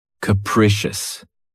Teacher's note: This word has 3 syllables, and the stress is on the second syllable. Keep in mind that the first syllable has that schwa sound K, precious.